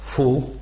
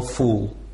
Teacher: Это короткое, это длинное. Короткое произносится как «у» без движения губ, длинное как «у» с движением губ.